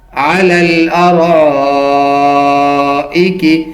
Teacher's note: یہاں جو را زبر الف مد را آ رہا ہے یہ مد متصل واجب ہے، اس کو 5 الف کی مقدار کے برابر کھینچ کے پڑھیں گے کیونکہ ارائکی جو حمزہ ہے وہ اسی کلمے کے ساتھ ہے جس کلمے میں مد آ رہی ہے.